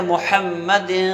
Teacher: زبان کو نون کے مخرج پہ لگانا نہیں ہوتا، بلکہ زبان کو نون کے مخرج سے ہٹا کے رکھنا ہوتا ہے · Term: اخفا